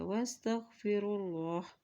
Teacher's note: اللہ کے نام سے پہلے پیش ہے تو اللہ کا نام یہاں پر موٹا ادا کیا جائے گا